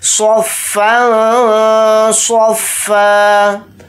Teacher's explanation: स्वाद को यहाँ पर मोटा यानी पुर पढ़ेंगे और इसमें इख्फा का कायदा भी हो रहा है क्योंकि यहाँ पर फ़ा के ऊपर दो ज़बर है यानी तनवीन, तनवीन के बाद स्वाद आ रहा है, स्वाद हुरूफ इख्फा में से एक हर्फ है इसलिए इसमें इख्फा का कायदा यहाँ पर हो रहा है।